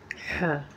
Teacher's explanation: ये इब्तदाई हलक से अदा होता है।